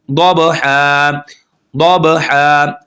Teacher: अब बा पर हम कलकला करेंगे